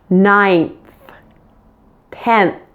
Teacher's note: the same thing happens with the end sound before the th you'll actually pronounce the final n in those words with your tongue sticking out as we're getting closer to making the th · My tongue is out when I'm pronouncing the N and the TH.